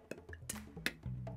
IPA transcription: p⌝ t⌝ k⌝